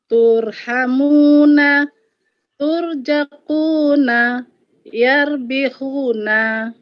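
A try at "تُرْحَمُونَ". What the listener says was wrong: Ya, bagus, tetapi sedikit lebih ditebalkan rok sukunnya ya, Bun. roknya jadi tur, Jadi jangan yar datar, jadi jangan datar. Jadi agak tebal.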